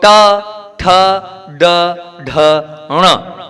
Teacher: दांत पर जीभ टच नहीं होना चाहिए जीभ को मोड़ो और जीभ को कहां ले जाओ पीछे · जीभ को पीछे ले जाओ आप और ट ठ ड ढ ण ऐसा उच्चारण करो